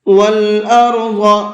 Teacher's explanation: وَالْأَرْضَ یہاں ضاد کو بھی منہ بھر کے پڑھیں گے۔